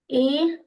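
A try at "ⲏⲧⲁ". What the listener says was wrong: That's not an e. That's eta.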